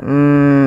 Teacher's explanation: ada gunah di lafal mim dan wajib kita tahan dahulu sepanjang dua harakat. Maka kita tahan dulu suara mimnya.